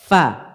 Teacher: Di bibir bawah dengan gigi seri atas. Dengan ujung gigi seri atas.